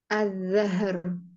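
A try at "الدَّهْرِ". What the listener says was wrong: Ad-dahr itu huruf dal. Ad-dahr.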